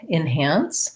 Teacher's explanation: even though it's spelled with letter E, because it has second syllable stress, might sound a little bit more like an I, enhance. And then we have this vowel is the black cat vowel, the ah vowel.